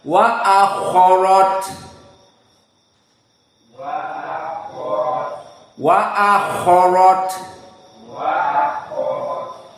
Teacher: Maka kha termasuk dari huruf isti'la tafkhim. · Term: kha mufakhamah